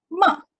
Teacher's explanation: Dia pendek je. Tapi daripada tinggi ke rendah. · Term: tone 4